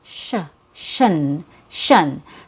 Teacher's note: The last syllable also has a schwa sound and it has an sh sound before the schwa. So we make the last syllable with an sh and then a schwa and then an n.